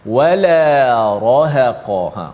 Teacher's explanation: Wala nipis, ra tebal, ha nipis, qaf tebal. Dia tebal nipis, tebal nipis, tebal nipis, tebal nipis.